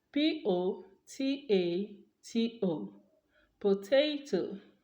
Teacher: I am going to aspirate that T because the vowel sound is a stressed vowel because it is at tail that potato is stressed. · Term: aspiration